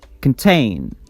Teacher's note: It's a two-syllable word, and we stress the second syllable